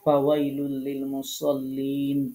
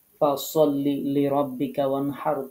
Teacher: আরবি যে ফা, এটা উচ্চারণ করার সময় দুই ঠোঁট লাগবে না, দুই দাঁতের উপরে যে দুইটা দাঁত আছে সেই দাঁতের আগার সাথে নিচের ঠোঁট এভাবে লাগাইতে হবে। হ্যাঁ, এই যে রেড সার্কেল যেখানে দেওয়া আছে এই জায়গাটা খেয়াল করেন, এভাবে ফা উচ্চারিত হয়। · এরপরে 14 নম্বর মাখরাজ, নিচের ঠোঁটের পেট উপরের দুই দাঁতের আগার সাথে লাগিয়ে ফা উচ্চারিত হয়। আমাদের অনেক আপুদেরকে পেয়েছি যারা দুই ঠোঁট দিয়ে ফা উচ্চারণ করে, বাংলা ফ এর মতো। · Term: আরবি ফা